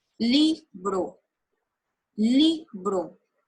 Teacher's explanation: Descubrí que hago la mayor fuerza en li. Y li es la penúltima sílaba. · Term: sílaba tónica